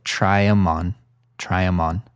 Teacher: the them in this expression is reduced to M